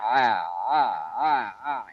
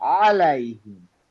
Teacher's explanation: গলার মধ্যে সাউন্ডটা আসছে একদম গলার মাঝখানে। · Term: গলা ভাঙা আইন